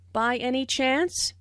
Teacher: Notice the rising intonation, which is used in yes/no questions to confirm that something is true.